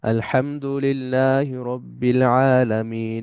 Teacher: আলহামদুলিল্লাহি রব্বিল আলামিন। এখানে আলামিন, মিনটা লম্বা হবে, একটু বেশি লম্বা হবে, একালিফের চাইতেও বেশি লম্বা হবে, কারণ এখানে আমরা থেমে যাচ্ছি।